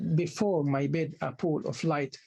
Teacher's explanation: the first syllable is unstressed the second syllable is stressed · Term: accentual